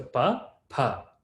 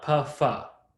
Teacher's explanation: it's just mahaprana pa, a little more air, pa.